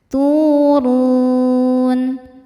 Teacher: Huruf ra dibaca tafkhim karena berharokat dhammah. Cara bacanya tebal.